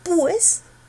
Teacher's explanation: La fuerza no está en la U, sino en la E. Por lo tanto, forma un diptongo.